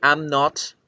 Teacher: Con el am not no se puede contraer ¿Por qué? Porque la M y la N se producen en un mismo lugar en la boca y al tratar de producirlas no es posible.